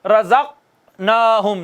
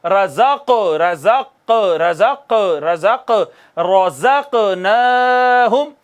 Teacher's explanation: دیکھیے قاف ساکن آیا ہے تو یوں نہیں پڑھنا رزقناہم، نو، قلقلہ کریں گے، آواز لگ کر واپس آئے گی